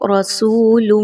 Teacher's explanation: را کے اوپر حرکت آ گئی ہے اس وجہ سے اس را کو موٹا کر کے پڑھیں گے، باریک نہیں پڑھنا